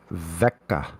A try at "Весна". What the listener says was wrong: Весна. Are you reading the letters in the Russian alphabet, or are you reading it in the English alphabet? Then some of the letters you're pronouncing wrong because the letters they might look like your A, but it's not an A. And then there's a C after there.